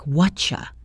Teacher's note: This is a perfect example of assimilation and reduction. The words what are you have been crushed together to sound like whatcha. The T from what and the Y from you assimilate to make that chie sound.